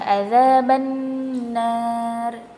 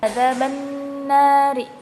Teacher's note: Di sini juga ada hukum gunnah, karena huruf nun yang bertasdid